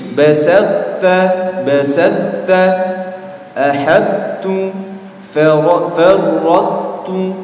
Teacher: Cara mengidghamkannya adalah dengan mengeluarkan huruf to dari makhrajnya tanpa diqalqalahkan. Ya, ingat ya, qalqalahnya hilang. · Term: idgham naqis